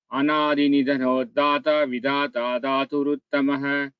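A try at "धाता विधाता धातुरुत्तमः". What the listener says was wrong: Ensure you chant the Mahaprana Aksharas with the stress. Dhata, Vidhata, Dhaturuttamaha, like that.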